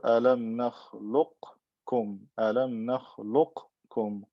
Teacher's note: Qaf is meeting kaf. What happens? It gets merged into the kaf because it's similar to it, it's close to it. So it becomes alam nakhluq, look. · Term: idgham saghir